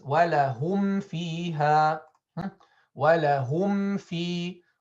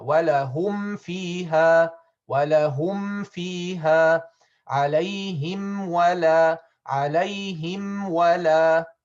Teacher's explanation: we should close the lips completely in order for the meme to be clarified and not be hidden before these two letters